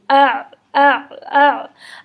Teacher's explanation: इसको हम वस्ते हलक से अदा करते हैं, बिल्कुल दरमियान हलक से इसकी आवाज़ निकलेगी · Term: आइन